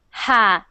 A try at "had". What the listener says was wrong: Keep your tongue, right now your tongue is like this at the back of your mouth, going like this. Had, had. But if you think about relax your tongue so it is at the bottom. Ha, ha, had.